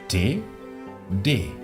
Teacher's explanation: La D y la T alemanas son más fuertes, más oclusivas que en español, muy parecidas a las del inglés.